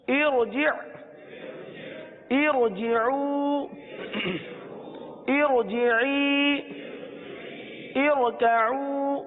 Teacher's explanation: را ساکن سے پہلے عارضی زیر ہو تو را کو پر پڑھیں گے۔